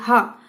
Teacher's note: जो हा होता है वो कंठ के भीतरी भाग से निकलता है · हमारी जीभ है जो स्पर्श नहीं कर रही है और सीधा अंदर से कंठ से बाहर आ रहा है